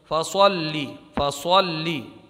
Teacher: یہ صاد مستعلیہ میں سے ہے، اس کو پر پڑھیں گے۔ فَصَلِّ فَصَلِّ، صاد کی آواز پر نکلے گی، فَصَلِّ۔